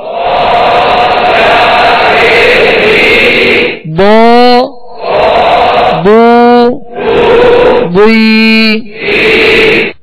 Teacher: یہ جو حروف آ رہے ہیں یہ حروف مستعلیہ میں سے، ان کو پر پڑھنا ہے